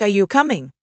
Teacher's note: Raise your pitch at the end to indicate you're asking.